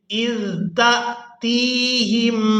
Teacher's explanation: تا کو یائے مدہ کے ساتھ ملاتے ہوئے کھینچ کر ادا کریں گے۔